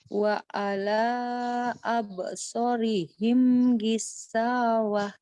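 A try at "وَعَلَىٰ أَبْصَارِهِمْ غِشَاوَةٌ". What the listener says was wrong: Soalnya kurang panjang. Diulang. So, abso.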